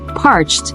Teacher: You don't pronounce ed at the end of the word. You say a soft T sound.